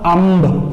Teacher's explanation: ਹੁਣ ਅੰਬ ਨਾਲ ਤਾਂ ਜਿਹੜੀ ਆਵਾਜ਼ ਹੈ ਉਹ ਨੱਕ ਦੇ ਵਿੱਚੋਂ ਆ ਰਹੀ ਹੈ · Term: ਨਾਸਕੀ ਆਵਾਜ਼